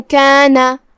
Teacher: کلمت کانا کے آخر میں نون پہ زبر ہے، دھیان رہے ہم نون کو صرف زبر سے ادا کریں گے، اپنی آواز لمبی نہیں کریں گے